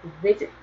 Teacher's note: 사전의 발음을 들어보면 visit 그래서 앞에 강세가 있어요. 그래서 강세가 마지막 모음에 있지 않네?